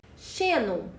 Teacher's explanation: Xenon tem como sílaba tônica a penúltima sílaba, que é o xe, que é a sílaba pronunciada mais fortemente. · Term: paroxítona